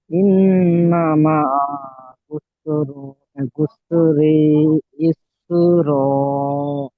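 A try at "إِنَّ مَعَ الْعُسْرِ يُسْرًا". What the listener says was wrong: উসরি বলে রয় একটু টান দিয়ে ফেলেছেন, রয় টান হবে না। উসরি ইউসর।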